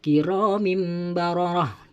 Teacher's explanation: Jadi tidak boleh dibaca kiramin bararah, tidak boleh, harus dibaca seakan-akan tanwin tersebut, tanwin kasroh pada lafaz kiramim bararah itu dibaca mim sukun